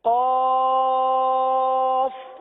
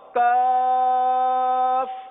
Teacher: تھوڑا سا فرق ہے ان دونوں کے مخرج میں. قاف زبان کی جڑ اور تالو کے نرم حصے سے ادا ہوتا ہے، اور کاف زبان کی جڑ اور تالو کے سخت حصے سے ادا ہوتا ہے